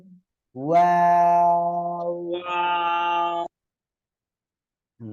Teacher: এই অক্ষরটা দুই ঠোঁট গোল হবে, ঠিক আছে, দুই ঠোঁটটা গোল হবে। যদি গোল না হয় তাহলে কিন্তু হবে না।